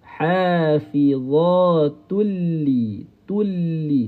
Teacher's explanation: Bunyi nun. Bunyi nun kita kena hilangkan tu ni terus pergi kepada lam. · Tulli tak ada dengung. Jangan ada suara naik ke hidung. Kerana hukum di sini ialah idgham bila gunnah. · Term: idgham bila ghunnah